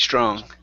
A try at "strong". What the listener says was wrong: give me a G there at the end.